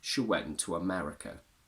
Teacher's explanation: because it ends on a U sound that is followed by another vowel, we also have a little intrusive W.